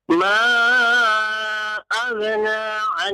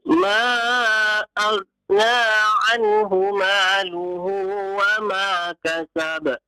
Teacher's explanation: Ghain jangan diqalqalah. Jangan jangan ya. Ghain bukan huruf qalqalah.